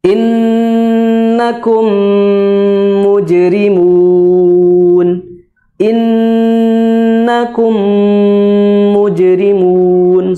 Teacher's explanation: nun bertasdid dan mim bertasdid, maka bacanya adalah dengan gunnah yang maksimal.